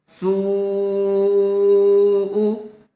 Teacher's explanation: حمزہ تا زبر ات، سی ات، سین واو مد پیش سو، واو ساکن حروف مدہ آیا ہوا ہے، پیش والے حرف کے بعد واو ساکن آیا ہوا ہے اور حرف مدہ کے بعد حمزہ اسی کلمے میں آیا ہوا ہے، اس لیے مد متصل کا قاعدہ ہوگا۔ اس کو کھینچ کر پڑھیں گے۔